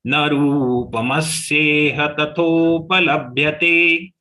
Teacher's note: I am taking stress on ma and la immediately since they are short letters.